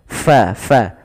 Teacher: alirkan nafasnya, fa, jangan dibaca pa